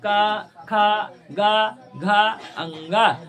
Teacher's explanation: ना तो आप ऐसे लगेगा वो कंठ से निकल रहा है उसका प्रोनंसिएशन प्लेस क्या है कंठ है